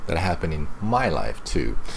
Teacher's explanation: So here, some stress on my.